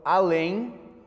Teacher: a tônica cai na última sílaba